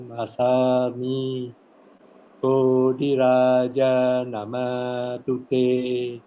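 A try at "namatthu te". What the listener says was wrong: Namat, the T must be clear. Namat tute.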